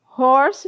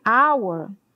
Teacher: Horse tem som de R, mas hour já tem o som de A aberto